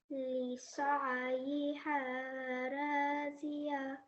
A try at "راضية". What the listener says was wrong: Try to round in your mouth slightly when you're saying the ra there. Okay, راضية.